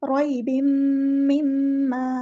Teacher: तन्वीन आ गई है, उसके आगे है मीम, तो यहाँ पर हो रहा है इदग़ाम, इदग़ाम माल गुन्ना हो रहा है , रॉइबिम मिम्मा, यहाँ पे मीम पे शद आ गई है,